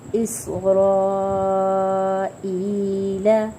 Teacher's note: اس سین کی سیٹی، سین میں سیٹی واضح کریں گے